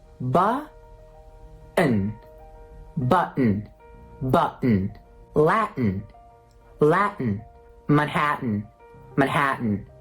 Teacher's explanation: So what happens is, forget about those T's. Replace the T's with a glottal stop.